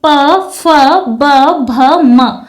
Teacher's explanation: जब हम इन प वर्ग के वर्णों का उच्चारण करते हैं तो हमारे होठ आपस में स्पर्श करते हैं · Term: ओष्ठ्य वर्ग